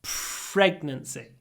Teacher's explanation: Pregnancy, again, try to do lots of aspiration. Pregnancy. Between the p and the r.